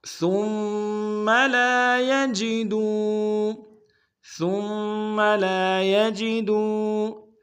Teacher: ثم میں سا کو میم کے سامنے لائیں گے، سا کو باریک ادا کریں گے، میم کے اوپر تشدید زور دیں گے.